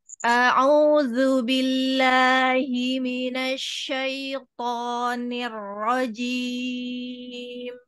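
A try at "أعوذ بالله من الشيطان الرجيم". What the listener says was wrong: Ini lupa membuka mulut. Nash, nash, nash, Nah.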